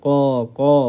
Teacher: Huruf qaf ni dekat dengan anak tekak ni. Huruf qaf. Sebab tu bunyi dia dalam sikit.